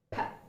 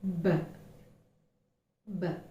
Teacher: you will experience no vibration when you articulate the sound P. You can place your fingers on your throat and check P.